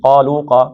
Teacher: قاف قاف موٹا پڑھنا ہے، مد اصلی ہے، لو مد اصلی ہے